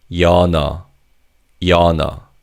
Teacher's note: because the second syllable begins with an 이응, the 니은 받침 in the first syllable carries over to the second syllable. So this word is pronounced as 연어.